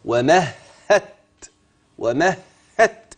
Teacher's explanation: من الهاء للتاء مباشره فانا كتبت النطق مباشره راحت فين الدال ودي غمت في التاء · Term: ادغام